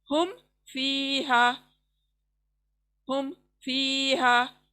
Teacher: ہم فیہا، ہم یہاں پر ہم فیہا ایسے نہیں پڑھیں گے، ہم میم پہ بالکل بھی رکنا نہیں ہے، رکیں گے تو ناک میں آواز چلی جائے گی ، اس لیے ہمیں رکنا نہیں ہے، ہم فیہا، ہم فیہا،